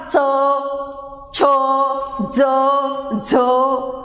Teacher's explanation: हवा किंचित काळ अडवली पण जाते आणि नंतर ती बाहेर पाठवली जाते, पण एकदम पाठवली जात नाही, तर अशी घासून बाहेर पडते किंवा हळूहळू बाहेर पडते. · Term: स्पर्श संघर्षी स्वन